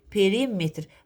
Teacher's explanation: Perimetr deyirəmsə vurğu riyə düşəcək.